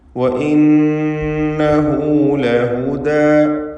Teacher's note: വഇന്നഹു ഈ പദത്തിൽ നൂൻ മുഷദ്ദദ, ഷദ് നൽകപ്പെട്ട നൂനിനെ മണിച്ചുകൊണ്ട് ഉച്ചരിക്കേണ്ടതാണ്. പദത്തിൻ്റെ അന്ത്യത്തിലുള്ള ഹ ദ്വമീർ, അതിന് സില എന്നും പേരുണ്ട്. 2 ഹറക്കത്തിൻ്റെ അളവിൽ അതിന് ദീർഘം നൽകേണ്ടതാണ്. മദ്ദുസ്സിലത്തി സുഗ്റ.